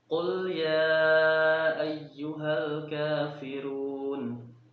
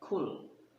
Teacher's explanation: Nah, kemudian ada sifat yang kita soroti dari kedua huruf ini adalah sifat syiddah, dan huruf kaf itu sifatnya al-hams. Al-hams itu berarti dia beserta udara ataupun beserta angin ketika kita melafalkannya. · qaf itu lebih dalam, berada sedikit di dalam, sedangkan kaf itu sedikit di luar. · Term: huruf qaf